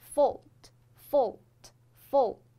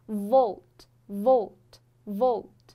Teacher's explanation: 它的唯一的区别就在于声带它震动了，它是一个浊辅音